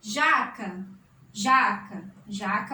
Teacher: jaca mais forte é o já, terminando em a. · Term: paroxítona